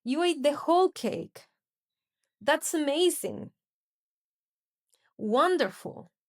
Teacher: The rise fall tone typically signals surprise, a strong emotion, or impressed disbelief.